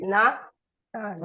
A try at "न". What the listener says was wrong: Na. You have to pronounce na short, not long.